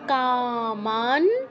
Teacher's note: আছে এটা কিন্তু আমাদের ন এর পূর্ণ উচ্চারণ হবে না কামান কাতে দীর্ঘ মাতে দীর্ঘ ন এর অর্ধ উচ্চারণ